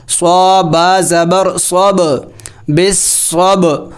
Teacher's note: با حروف قلقلہ میں سے ہلا کے پڑھا جائے گا